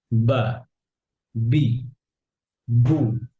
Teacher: Pronounce from the ওয়েট part of both lips, বা। The ba is articulated by closing the two lips together, but a stronger closing than the meme.